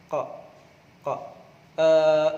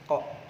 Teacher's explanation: kalau ain itu lebih ke nyaring, cuman kalau misalkan ko lebih ke dalam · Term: huruf ko